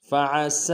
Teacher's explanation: کرہتموہن فإن کرہتموہن فعسى، فعسى میں فا کو نون سے ادا کریں گے، آئین کو گہرائی سے ادا کریں گے، سین کی سٹی باریک ہوگی